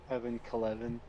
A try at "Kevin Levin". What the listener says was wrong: No, Kevin Levin, you fucking Kevin Kelevin No, replaced with an L, not add an L after the K.